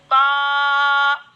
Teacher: बा अदा होते हैं दोनों होठों के तरी वाले हिस्से से